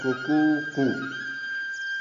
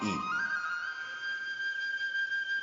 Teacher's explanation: और महामुनि पाणिनि ने उस समय अपना अनुभव व्यक्त किया, एक उदाहरण दिया कि उसकी जो ध्वनि है कुकू कू क्रमशः ह्रस्व, दीर्घ और प्लुत रूप में आती है